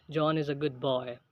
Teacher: there is the fall of voice when you make a statement as in John is a good boy The Voice goes down